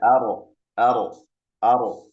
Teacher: berdasarkan aliran napas dia jahar ya sifatnya tidak ada napas misalnya ar ar ar ya sebagian besar napasnya tertahan.